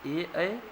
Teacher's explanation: ए ऐ का उच्चारण स्थान याद रखिएगा कंठ तालू दोनों के मेल से होता है कंठ तालू दोनों के मेल से इसको कंठ तालव्य भी बोलते